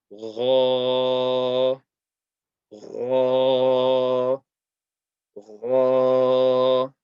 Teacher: this is a heavy letter. And the sound comes from the top of the throat. So it's similar to Kha. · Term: The letter Ghain